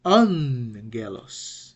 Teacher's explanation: The first gamma is pronounced like an N. When gamma precedes another gamma, when it precedes kappa, when it precedes key, okay, so it is pronounced like an N.